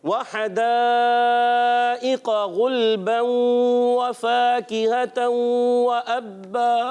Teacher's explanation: एक अलिफ का गुन्ना अदा करेंगे, इदगाम होगा, गुन्ने के साथ होगा। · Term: इदगाम माल गुन्ना